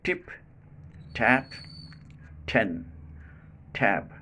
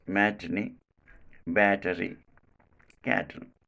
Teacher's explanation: in the initial position, this sound is aspirated and pronounced as t